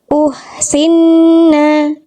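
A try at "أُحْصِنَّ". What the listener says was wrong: H kecilnya mana? Bunyinya belum duduk. Uhsinna. Jadi kurang detil, kurang duduk pada makhrajnya gitu ya. Kurang terpenuhi nyawanya kalau saya sering bilang.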